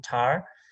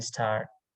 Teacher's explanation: So if 2 different pronunciations or allophones of a sound type of phonemes, it's used in different places in words, it is called complementary distributions. So t is pronounced as a very strong t with aspirations in tar, and it's pronounced soft t without aspirations after another consonant in initial positions as in star